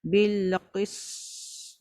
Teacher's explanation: Sebab sin di rahawah ada ekor suara. Bil qist. Tapi tak adalah sepanjang tu. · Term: sifat rahawah sin